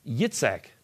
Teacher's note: the Jewish pronunciation for Isaac is Yitzhak, with the emphasis on the last syllable